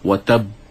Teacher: qalqalah itu adalah lantunan, bukannya sehingga kita menambah huruf lain selepas huruf ba itu dengan menyebut watab ba, ataupun kita menyebut sehingga seolah-olah kita membariskan huruf ba itu.